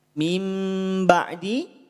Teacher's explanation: nun sukun bertemu ba maka dua harakat iqlab samar dengung